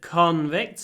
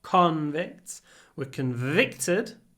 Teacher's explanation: So convicts, stress on the O, convicts, were convicted, stress on the I. So the stress moves.